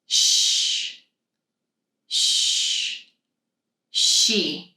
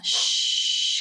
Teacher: I can make the sound long, shh, because the air is just constantly flowing out. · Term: extending sound